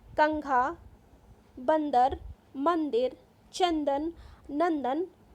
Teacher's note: इनका उच्चारण करते समय वायु नाक से बाहर आती है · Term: अनुस्वार